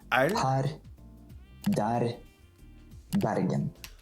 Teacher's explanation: Oh, this is the tongue rolling thing. Norwegian has like a rolling R